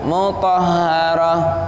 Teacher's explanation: Kalau berhenti di situ tak marbutahnya itu menjadi ha